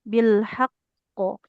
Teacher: karena bertasdid, dia pantulannya lebih kuat. Sebagaimana kita baca huruf bertasdid kan diberi penekanan dulu ya. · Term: kol-kolah akbar